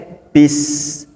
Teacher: Sin itu sifatnya sofir dan hames. Sofir artinya ada desisnya.